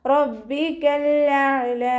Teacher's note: ലാമ് കൽക്കലയുടെ ലെറ്റർ ഇല്ലാത്തത് കൊണ്ട് ഹാഫ് സുക്കൂന് കൊടുത്തിട്ട് ഉച്ചരിക്കുക. ഹംസ ക്ലിയർ ആക്കിയിട്ട് ഉച്ചരിക്കുക കേട്ടോ. അഖ്സൽ ഹൽക്കിൽ നിന്നാണ് ഹംസ പുറപ്പെടുന്നത്. സൗണ്ടിനെ വ്യക്തമാക്കി കൊടുക്കുക.